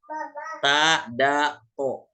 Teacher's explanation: ujung lidah bertemu dengan belakang gigi seri bagian atas